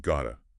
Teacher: What's fascinating is the phonetic mechanism behind it. When native speakers merge got to, the two key sounds often blend and you get gota.